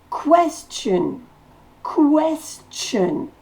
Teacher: la syllabe accentué c'est Quest